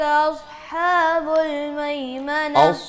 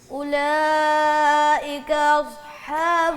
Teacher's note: صاد کو موٹا کر کے پڑھو، سیٹی کی آواز بھی ہے